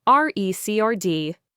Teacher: Stress on the first syllable, noun, a music album or a piece of data,